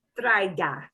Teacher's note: change the o at the end to an ah sound